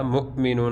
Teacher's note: حمزہ ساکنہ کو ہمیشہ جھٹکا دے کر پڑھتے ہیں